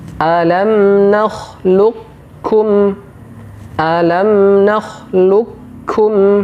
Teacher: huruf qf dimasukkan secara sempurna ke huruf Kaf · Huruf qaf dimasukkan secara sempurna ke huruf kaf. Meskipun dalam riwayat yang lain ada yang berpendapat bahwa huruf qaf ke huruf kaf cara mengidghamkannya sama seperti huruf to ke huruf ta. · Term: Idgham mutaqaribain